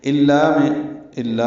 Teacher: الا الف مدہ ہے، دو حرکات لمبا ہے.